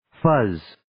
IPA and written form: fəz (Fuzz)